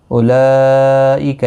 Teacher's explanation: اولئک یہاں پر مد متصل ہے، 4 الف کی مقدار کے برابر کھینچ کر پڑھیں گے